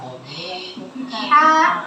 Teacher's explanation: Nah, dia bersifat hams atau ada aliran nafas.